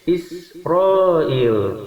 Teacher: sin mempunyai sifat hamas, dalam arti ketika dibunyikan dia ada hembusan napas atau angin yang keluar.